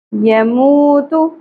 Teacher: حرف مدہ ایک الف کے برابر کھینچیں گے لا یموت یموت واؤ ساکن حرف مدہ ہے ایک الف کے برابر کھینچیں گے